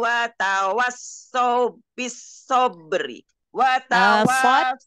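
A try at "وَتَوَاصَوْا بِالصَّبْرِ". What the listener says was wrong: Sod, sodnya enggak ini, enggak tasdid. Watawasaw bisabri. Sot yang kedua tasdid. Sot yang pertama enggak. Watawasaw bisabri.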